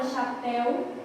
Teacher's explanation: na palavra chapéu, a presença de uma oxítona, porque a última sílaba é a mais forte